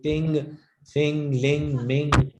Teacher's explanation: ये बेसिकली जो ING की साउंड्स होती हैं, जैसे टिंग, फिंग, लिंग, मिंग, जो आखिरी वाली आवाजें वो ये NG की साउंड्स हैं और ये नाक से बोली जाती हैं